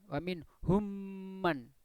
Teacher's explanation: Mem ketemu mem ya, itu namanya idgham mimi.